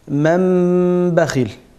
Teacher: Tenvin veya cezimli nundan sonra B harfi gelirse, nun sesi mim sesine çevrilir ve ihfa yapılır. İki hareke miktarı günne yapılır. Sonra B sesi net okunur. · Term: iklab